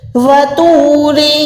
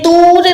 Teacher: وطور، یہ تور نہیں ہے، تو کو موٹا کرنا ہے، منہ کو گولائی کر کے واو مدہ کے ساتھ 1 سیکنڈ کھینچ کے پڑھنا ہے۔ رو یہاں پر پتلی ہے، اس کے ٹائم پہ آپ نے منہ کو گولائی نہیں کرنا۔